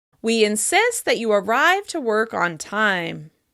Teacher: I'm stressing the verb of suggestion as well as the action in the second part of the sentence.